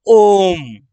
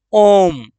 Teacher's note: ओम को बोलने में, ओ को बोलने में 3 गुना समय लगा है। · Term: प्लुत स्वर